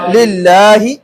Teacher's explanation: لفظ اللہ کے لام سے قبل زیر آ جائے تو لفظ اللہ کے لام کو باریک کر کے پڑھیں گے